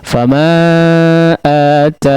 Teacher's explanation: Jadi nunnya menjadi sukun, ya, dan menjadilah mad arid lisukun karena diwaqafkan.